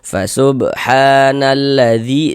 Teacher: Sebenarnya zi dibaca panjang. Mad tabi'i panjang 2 harokat.